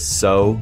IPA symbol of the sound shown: s